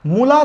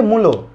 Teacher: ও হয়ে গেছে। অর্থাৎ শুরুর উটার প্রভাবে পরের আ পরিবর্তন হয়ে ও হয়েছে। তার মানে প্রথমটার জন্য পরেরটা পরিবর্তন হয়েছে। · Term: প্রগত স্বরসঙ্গতি